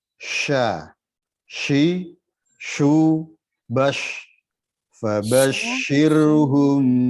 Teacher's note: ada satu sifat yang melekat di harfus shin itu adalah tafashi, menyebar. Ada dorongan dari dalam keluar.